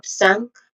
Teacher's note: sank which has a short a vowel sound and a nasal sound ng sound basically